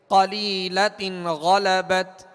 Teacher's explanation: غین حروف مستعلیہ میں سے ہے, بغیر ہونٹ گول کیے اسے پر پڑھیں گے. قلیلۃ غلبت.